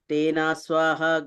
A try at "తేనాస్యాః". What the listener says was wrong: అస్య అండి, తేన అస్య, అస్వ కాదు, అస్య.